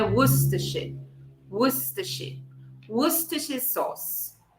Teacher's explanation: Esse linha aqui que parece uma cobrinha no final, entre os dois sons schwa, esse é o som de sh em inglês